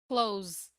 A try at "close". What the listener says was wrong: Close. Close. No, S sound. Close.